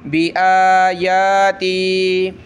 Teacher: حمزہ کھڑا زبر آ، یا کھڑا زبر یا، ایک الف کی لمٹ میں اوپر کھینچیں گے